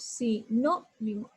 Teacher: Aquí elevo la voz, en la no. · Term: sílaba tónica